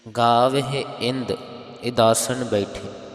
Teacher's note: ਕਿਸੇ ਨੇ ਰਾਰਾ ਲਗਾ ਕਰਕੇ ਇੰਦਰ ਇੰਦਰਾਸਨ ਨਹੀਂ ਕਹਿ ਦੇਣਾ ਉਹ ਪਾਠ ਅਸ਼ੁੱਧ ਹੋ ਜਾਵੇਗਾ ਸ਼ੁੱਧ ਪਾਠ ਇੰਦ ਇਦਾਸਨ ਹਨ ਬੈਠੇ